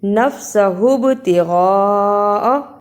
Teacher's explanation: بڑی مد ہے، 4 انگلیوں کے برابر لمبا کرنا ہے